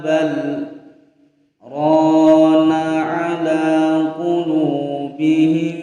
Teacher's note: bal berhenti terus dilanjutkan rona